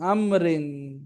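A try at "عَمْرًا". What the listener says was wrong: रा क्यों? रा साकिन करनी मीम की तरह।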